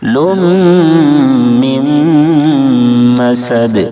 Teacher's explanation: फिर नून साकिन के बाद हरूफ यूमिन के चार हरफों में से मीम है। दोनों जगह इदगाम नाकिस होगा। यानी गुना के साथ इदगाम करेंगे। · لم من مسد دونوں جگہ ادغام ناقص ہو رہا ہے، کیونکہ یہاں پر تنوین کے بعد حروف یومن کے 4 حرفوں میں سے میم ہے، پھر نون ساکن کے بعد حروف یومن کے 4 حرفوں میں سے میم ہے، دونوں جگہ ادغام ناقص ہوگا، یعنی غنہ کے ساتھ ادغام کریں گے۔ مسد سین کے دائرے میں سیٹی جیسی آواز نکلنی چاہیے، اور وقف کریں گے تو دال ساکن ہو جائے گی، اس صورت میں دال میں قلقلہ ہوگا یعنی آواز لوٹ جائے گی۔